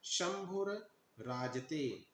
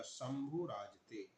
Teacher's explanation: जब दीर्घ हो जाएगा तो भ पर उ की दीर्घ ऊ की मात्रा अर्थात बड़ा ऊ की मात्रा लगेगी और र तो हटना ही है। र हट जाएगा और भ पर दीर्घ ऊ की मात्रा लग जाएगी। बनेगा शंभू राजते।